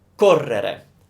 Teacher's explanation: The accent, the stress is on the co.